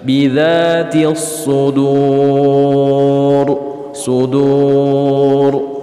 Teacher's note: Ra sukun apabila huruf sebelumnya adalah waw sukun, maka cara bacanya dibaca tafkhim atau ditebalkan.